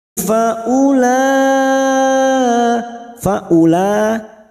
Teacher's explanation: huruf wau di sini dianggap tidak ada langsung masuk pada faul lanya kita panjangkan Li harakat bertemunya Mad